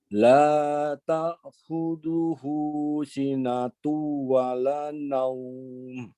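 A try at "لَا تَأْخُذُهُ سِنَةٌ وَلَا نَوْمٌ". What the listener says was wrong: Baik, taknya ditekan. Baik, masih di ayat itu pada kata khudhuhu, hu-nya yang dipanjangkan. Sinatunya lebih lama.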